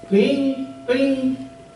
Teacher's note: the word for blue and green has the top tone